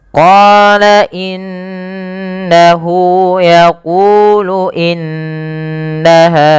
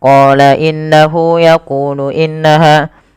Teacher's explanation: Kemudian pada lafal innahu yaqulu, pada lafal inna apabila ada huruf nun berharakat tasydid, ini kita baca dengan bacaan gunnah dengan cara menahan suara bunyi nunnya dan dimasukkan ke rongga hidung sepanjang 2 harakat. Maka kesalahan yang terjadi tidak menahan suara nunnya, atau misalkan langsung saja qala innahu yaqulu innaha, ya itu kurang tepat.